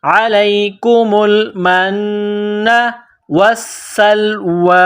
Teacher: نون مشدد ہے تو یہاں آواز ناک میں چھپائیں گے غنہ کریں گے.